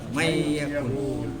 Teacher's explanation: Jadi bila kita nak lancarkan dia, tindih je lah tu. Man yakul jadi may yakul. Nun tindihkan dia.